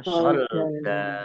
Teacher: kalau wakof dibaca fathah panjang 2 harokat